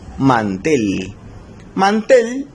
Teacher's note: Mantel lleva la mayor fuerza de voz en la última sílaba, sin embargo no se va a tildar porque no termina en NS o vocal. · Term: agudas